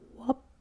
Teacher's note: If we have the final consonant devoicing plus gliding, rub could be wup.